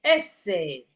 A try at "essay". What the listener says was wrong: Not a. Okay, essay.